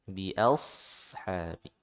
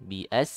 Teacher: Huruf shad dibaca tebal ya. Jadi jangan sampai seperti huruf sin.